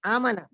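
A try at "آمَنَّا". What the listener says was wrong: نہیں، اس کو تھوڑا سا لمبا کرنا ہے، تھوڑا سا کھینچ کے پڑھنا ہے آمانا.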